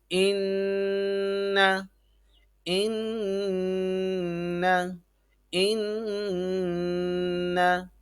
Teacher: اب حمزہ زیر نون ان، نون زبر ان، ان، غور کریں گے تو ناک میں آواز چھپائی جا رہی ہے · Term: غنہ